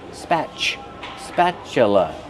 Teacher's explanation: Use the short A sound like black cat, spa, plus the ch sound like chicken. That's right, the T is pronounced with the ch sound.